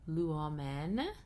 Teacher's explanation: has 3 syllables with the last syllable being short, and so the accent will go on the upsilon as an acute on the antepenult